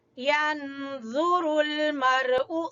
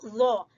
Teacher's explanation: ज़ो जबान की नोक और सामने वाले दो दांतों के सिरे से ज़ो